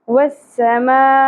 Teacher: تو ایک ہی لفظ کے اندر جب سبب مدہ حمزہ آ جائے تو وہاں پر ہم مد متصل کرتے ہیں اور اس کو ہم 5 الف کے برابر کھینچتے ہیں۔ والسماء، حمزہ جھٹکا کے ساتھ ادا ہوگا